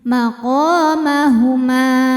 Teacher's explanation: Ma hukumnya Mad Thobi'i dahohiri sebab ada Alif didahului harakat fathah cara bacanya dipanjangkan mimnya dua harakat